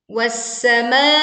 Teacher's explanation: Panjangkan ma sepanjang 4-5 harokat atau boleh sampai 6 harokat.